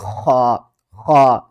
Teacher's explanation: آواز جو ہے نا ہمارے حلق کے سب سے اوپر والے حصے سے آئے گی